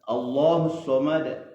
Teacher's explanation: lidah di pangkal tenggorokan itu diangkat sehingga otomatis mulut itu agak maju-maju sedikit bukan model senyum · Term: Huruf tebal